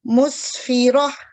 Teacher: جب اس تا پر ہم وقف کریں گے جو کہ دمتین کی صورت میں ہے تو یہ بھی ہا میں بدل جائے گی، یعنی اس کو ہا کے اوپر سکون آ جائے گا.